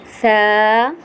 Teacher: دونوں دانتوں کے بیچ میں زبان کو لا کر نرمی کے ساتھ ادا کریں گے